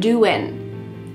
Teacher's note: What's happening with the G at the end? Doing. It's gone.